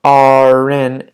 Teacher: you have to link it in to the next word not our in don't add an H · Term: linking